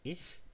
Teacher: you find the palatal one preceded by the vowel I and followed by the edge of a word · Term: palatal fricative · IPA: [ɪç]